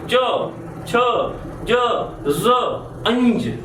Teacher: એનું ઉચ્ચારણ કરીએ ત્યારે તમારી જીભ તમારે તાળવા નડે. દાંતથી થોડી ઉપર આપણું તાળવું હોય છે ત્યાં આડે. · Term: તાલવ્ય